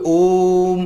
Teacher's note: प्लुत स्वर में थोड़ा और समय ज्यादा लगता है, यानी कि तीन मात्रा जितना समय लगता है।